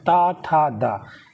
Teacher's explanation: ये किस में आते हैं? दंत में आते हैं।